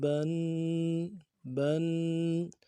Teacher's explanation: تنوین ہے، تنوین کو غنہ کرنا ہے، غنے کو ایک الف دال میں کھینچنا ہے. با دو زبر بن بن.